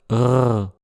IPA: ʀ